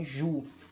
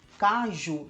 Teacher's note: Caju termina com a sílaba tônica forte em ju, mas o U não pode ser acentuado, porque a regra diz que não pode, somente as palavras a, e, o acentuados.